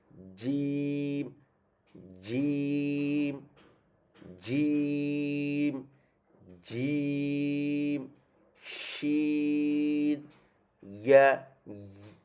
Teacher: 6 নম্বর মাখরাজ জিব্বার মধ্যখান মনে রাখতে হবে, জিব্বার মধ্যখানই লাগাতে হবে, জিব্বার মধ্যখান লাগাবেন।